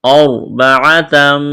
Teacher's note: را ساکن سے پہلے زبر ہے، را کو موٹا کرنا ہے